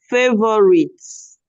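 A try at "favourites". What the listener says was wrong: In this word, the O and the U should not be heard. So it doesn't have 3 syllables. It has 2 syllables. Favorite.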